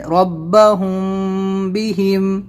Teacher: حمزہ نون زیر ان، نون زبر نا، ان، را با زبر رب، ان رب، با زبر با، ان رب، ہا میم پیش ہم، ان ربہم، با زیر بی، إن ربهم حاميم زير هم إن ربهم بهم إن ربهم بهم یہ ہم بہم ایسے ہوگا یعنی اونٹ بند رہیں گے اور آواز کو ناک میں بھی لے جانا ہے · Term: اخفا شفوی